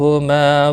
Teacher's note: اس کے اوپر کھڑی زبر بھی ہے ایک الف کے برابر کھینچ کر پڑھیں گے. ما الف مدہ ہے ایک الف کے برابر کھینچ کر پڑھیں گے